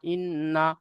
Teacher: নুনকে যখন আগের অক্ষরের সাথে মিলিয়ে পড়বো তখন একালি পরিমাণ গুন্না করে পড়বো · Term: নুন মুসাদ্দাদ গুন্না